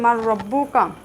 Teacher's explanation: নুন সাকিনের পরে র শব্দটি আসার কারণে এখানে নুন সাকিন কিন্তু উচ্চারিত হয়নি। আমরা মিমকে রয়ের সাথে মিলিয়ে পড়েছি, এক হরফকে আরেক হরফের সাথে মিলিয়ে পড়েছি। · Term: ঈদগাম